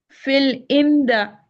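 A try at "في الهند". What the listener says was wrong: Why did you say fatha? Why not dhamma? Why not kasra? Why fatha? We did this in lesson 4, fi, and we did this also in our, in our grammar lesson.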